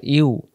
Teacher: ইউ জিহ্বার মাঝখান থেকে অক্ষর আদায় হয় ইউ